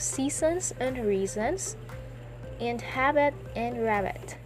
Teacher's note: Next, we have double rhymes, also known as feminine rhyme or trochaic rhymes. So the rhymes using words of two syllables in which the heavy stress falls on the first syllable. Remember, the heavy stress falls on the first syllable.